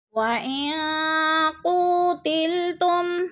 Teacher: نون ساکن کے بعد قوف آ گیا ہے تو ادھر اخفا ہو رہا ہے، یعنی آواز کو ناک میں چھپا کر پڑھیں گے